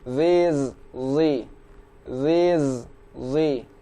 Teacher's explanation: huruf zo berharokat kasroh, kita ucapkan dari rahang tebal.